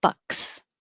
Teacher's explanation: Stopping the airflow with a K and releasing it with an S.